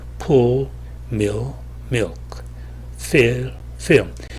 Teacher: 어두운 L의 경우에는 혀끝은 제대로 닿지 않을 수 있지만은 뒷면이 약간 올라옵니다.